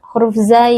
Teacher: huruf Zai bukan huruf Qalqalah sering terjadi huruf Zai ini dipantulkan Azwa ah itu salah huruf Zai adalah huruf rakhawah kita berikan